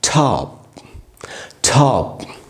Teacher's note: टी यहाँ पर एस्पिरेट होगा, ट प्लस ठ के जैसे बोलेंगे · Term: टी इज एस्पिरेटेड